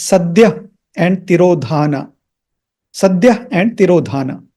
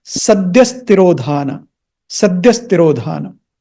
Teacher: आम तौर पे जब इनका पदच्छेद किया जाता है तो ऐसे होता है, लेकिन when you pronounce them together as in the mantra, then this visarga, these 2 dots or the H, is not pronounced like a visarga or an H. It is pronounced with the S sound. So it becomes sadhyastirodhana.